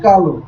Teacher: অ এর উচ্চারণটা হসন্ত না হয়ে রক্ষিত হচ্ছে, অবিকৃত থাকছে এবং তার উচ্চারণটা ও এর মতো হচ্ছে